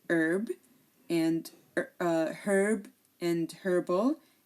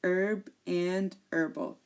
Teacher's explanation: So they are not pronounced, so they are herb and herbal. So the H in American English is not pronounced. That's why you heard me say herb sometimes.